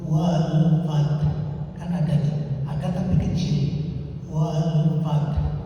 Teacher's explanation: Jadi bunyi huruf mati yang terakhir tetap ada, kedengar oleh dirinya dan orang setelahnya. Artinya sedikit haknya itu wal fat. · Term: waqaf rom